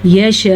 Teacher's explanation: اور جیسا کہ توا پہ ہم وقف کریں تو حمزہ ساکن ہو جائے گا. پہلے تو ہم نے مد کو خوب لمبا کرنا ہے یعنی کہ 5 سیکنڈ تک، پھر حمزہ کو ساکن کر کے ادا کرنا ہے